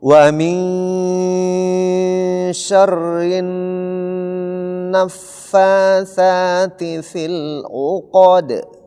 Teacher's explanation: qof di situ tebal dal di situ tipis dan dia huruf qalqalah maka dibaca separuh